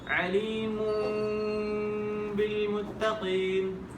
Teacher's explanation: ہوٹ پاس آئیں گے, ہوٹ پاس آئیں گے لیکن ملیں گے نہیں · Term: قلب